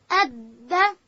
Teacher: دال ادا کیږي د ژبې سر به د لوړې زامې د مخ د دوو غاښو په بیخو ته ورولو.